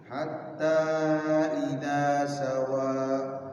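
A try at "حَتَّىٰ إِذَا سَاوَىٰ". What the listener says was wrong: Sanya panjang.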